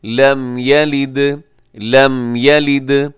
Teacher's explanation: یہاں میم کا اظہار شفوی ہے، تو آپ یہاں اس کو تیزی سے پڑھیں گے · اور اس میں دال قلقلہ ہے